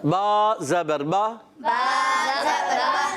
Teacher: با جو ادا ہوتا ہے ہونٹوں کے تر حصے سے.